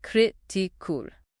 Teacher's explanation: This word is critical with the stress on the first syllable.